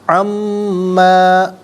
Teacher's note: ان ما نہیں پڑھیں گے بلکہ میم کی آواز کو غنّے کے ساتھ ادا کرتے ہوئے ہم پڑھیں گے